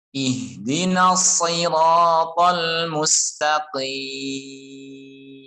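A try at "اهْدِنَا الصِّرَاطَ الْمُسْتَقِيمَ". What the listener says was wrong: Jangan mustaqim. Jadi jelaskan vokal ta, mustaqim. Qaf ketika kasroh, maka sempurnakan kasroh. Jangan tin, mustaqim. Ihdinas siratal mustaqim. Mustaqim. Jangan mustaqim.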